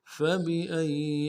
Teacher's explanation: حمزہ کو یا کے ساتھ ملانا ہے، یا کے اوپر تشدید زور دیں گے، اگلے یا کو نرم سے ادا کریں گے۔